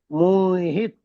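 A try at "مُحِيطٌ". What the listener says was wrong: মুহিত। হিটা টান দিতে হবে, দেখেন ইয়া মাদা আছে। মুহিত। হ্যাঁ, হাটা একালি পরিমাণ টান দিতে হবে। না, হি টান দিয়ে তবে তোর সঙ্গে জুড়বে। মুহিত। মুহিত। ইয়া মাদা টান হয়ে তবে তো জুড়বে।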